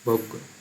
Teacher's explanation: এই ভোগ্যটা যেমন আমরা বাংলায় গয়জফলা লিখি, কিন্তু উচ্চারণে গয়ে গয়ই হচ্ছে ভোগ্য